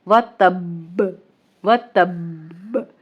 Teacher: با پہ تھوڑی دیر رکیں گے شد کی شدت کو برقرار رکھنے کے لیے